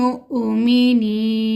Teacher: مؤمنین میں حمزہ ساکن ہے تو ہم اس کو جھٹکے سے پڑھیں گے